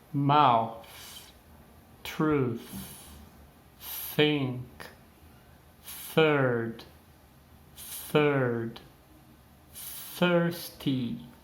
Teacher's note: palavras como mouth, truth, thirsty e third, eles vão ter aí o som voiceless, que é sem som ao pé da letra. Então não tem vibração. Então se eu pronunciar mouth, na hora que você chega no TH, você vai ver que não tem nenhuma vibração aqui.